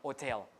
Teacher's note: some people pronounce the H, some people don't, hotel. So H tends to be lost.